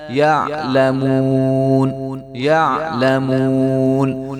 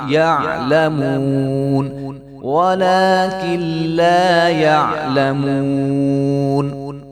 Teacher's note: عین کی آواز عین کی آنی چاہیے، وہاں پہ حمزہ کی آواز نہیں آنی چاہیے